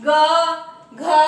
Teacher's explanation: व्यंजन का जो प्रथम वर्ग होता है वह कंठ से बोला जाता है